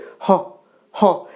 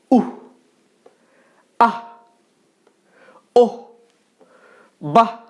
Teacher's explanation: হ টাকে টেনে উচ্চারণ করা যাবে না হয় হসন্ত এর মত উচ্চারিত হবে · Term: বিসর্গ এর খাঁটি উচ্চারণ